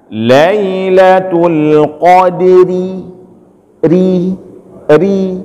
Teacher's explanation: karena dia berbaris dan barisnya ke bawah, itu dibaca tipis